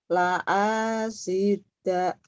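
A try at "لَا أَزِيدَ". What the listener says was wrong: La azi. Bukan la asi atau. La asi. La azi. Zai. Z.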